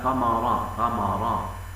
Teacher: يفخم الميم من كلمه ثمرات